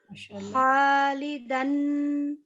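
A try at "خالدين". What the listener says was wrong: خا موٹا پڑا جاتا ہے تھوڑا سا. جی خالدن، خا تھوڑا سا راؤنڈڈ پڑھتے ہیں.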